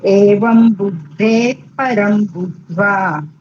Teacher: બુદ્ધેહે વિસર્ગ પછી પકાર આવે. વિસર્ગનો કયો ઉચ્ચાર થાય? ફ થાય ફ.